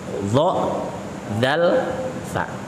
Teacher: Cara membacanya adalah dha, dzal, fa, ujung lidahnya harus dikeluarkan.